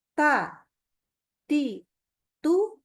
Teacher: gusinya dengan menempel kuat Gitu ya Jadi pas bilang Ta Nah karena menempelnya kuat maka dia tidak akan keluar menjadi terlalu banyak udara yang terhembus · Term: syiddah